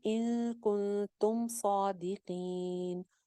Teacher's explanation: تم کی میم کو غنہ نہیں کریں گے, جما کے رکھیں